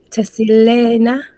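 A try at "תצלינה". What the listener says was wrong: Let's get a good Sadia. T-S. Titsilena.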